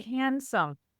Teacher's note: that D got dropped a couple hundred years ago